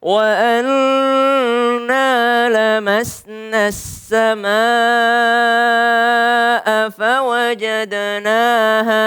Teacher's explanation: Tapi dia bertemu dengan alif lam, kemudian tasydid as-sama. Maka na yang 2 harokat melebur ke as-sama menjadi lamasnas ya.